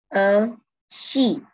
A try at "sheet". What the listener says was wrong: A sheet. Mà là nó sẽ bị bằng quá nhá. là nó sẽ khi mà đọc cái từ sheet ấy, thì nó sẽ bị là đây cái nó bằng này, đây nó bằng này.